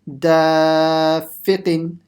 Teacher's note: So make sure you don't stretch the fi. Only the alif letter in the beginning.